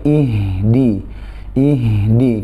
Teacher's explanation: huruf hijaiyah paling lemah adalah huruf H maksudnya berada di pangkal tenggorokan bersamaan dengan hamzah Jadi Hak disini harus dijelaskan jangan sampai di naik tapi ih